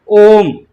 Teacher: ओम तीन मात्राओं का समय लगता है